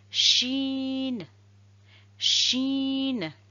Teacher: La lettre shin, cette lettre sort du milieu de la langue. Il faut s'appuyer sur le milieu du palais.